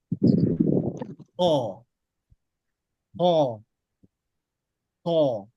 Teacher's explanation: Kho itu bahkan hampir seperti mengorok.